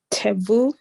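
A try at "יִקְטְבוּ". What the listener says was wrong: There you go. There you go.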